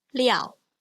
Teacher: So the mouth is more relaxed and opens wider when I pronounce liao.